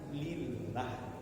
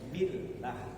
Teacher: kalau sebelum lafaz Allah itu ada huruf berbaris kasrah di bawah, ah itu dibaca ringan lillah. Ringan kita billah. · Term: tarkik ringan